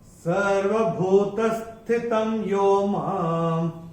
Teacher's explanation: पहले चरण में ये त के ऊपर जो अनुस्वार आ रहा है उसके बाद का अक्षर है य, और अनुस्वार के बाद जब य आएगा तो अनुस्वार का उच्चारण होगा म।